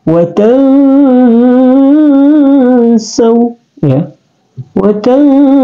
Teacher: Jadi dia didengunkan, dia didengunkan dan penyebutannya samar-samar ya, tidak boleh in, tapi dia seperti nd itu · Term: ikhfa